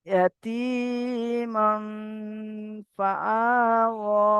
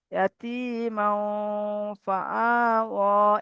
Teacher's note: তাই ইকফা, তানমিনের পরে ফা এসছে, হুরুফ ইকফার 15টি অক্ষরের মধ্যে ফা, তানমিন নুন সাকিন আওয়াজকে নাকে তুলে একালি পরিমাণ গুণনা করে পড়তে হবে · এখানে মাও, ইয়াতীমাও ফাআওয়া, আওয়াজটাকে নাকে তুলে গুণনা করতে হবে